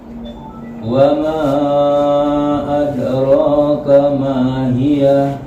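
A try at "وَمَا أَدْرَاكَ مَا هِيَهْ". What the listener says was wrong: Masih ada. Coba ada. Sukun dal sukunnya dikeluarkan. Jangan dijatuhkan begini.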